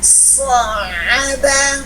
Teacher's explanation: Contoh di huruf ain, sa'aba. Ya, ada suara keluar tapi seakan-akan akan tertahan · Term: bainiyah